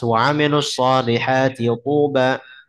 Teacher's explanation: Ini dalam bacaan hafs nggak boleh di idgham. Harus dibaca dengan jelas.